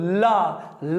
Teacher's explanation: जीभा ने दरवाजा ऊपर से बंद कर लिया और जीभा के बगल से हवा निकल गई, पास से हवा निकल गई। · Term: पार्श्विक व्यंजन